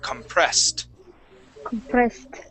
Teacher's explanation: this ED ending will sound like a T, compressed.